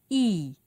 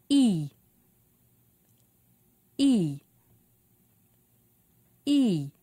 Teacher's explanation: E is a high front vowel sound.